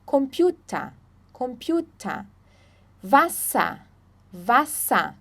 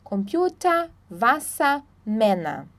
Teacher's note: Então, o ER aí no final sempre vai ser A